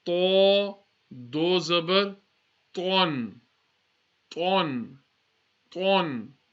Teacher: because this is a musta'liya, we're going to read with the full mouth